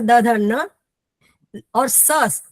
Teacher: फिर उसके बाद ऋतु लसा नाम, ऋतु लसा नाम इति दंताः, ये सारे दांतों से बोले जाते हैं